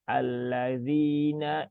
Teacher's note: itu hurufnya dzal ya ujung lidah bertemu dengan gigi seri bagian atas ya maka tempatkan gigi seri ujung lidahnya di gigi seri ya